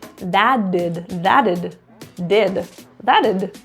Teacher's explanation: the tea turns to a flat D